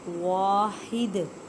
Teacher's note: وقف کی صورت میں دال کو ساکن کریں گے تو کلکلا کریں گے، کلکلا کا مطلب ہے ہلا کر پڑھنا